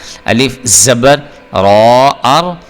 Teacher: را آ گیا ہے، تو آپ نے اس کو پر کر کے پڑھنا ہے، موٹا کر کے پڑھنا ہے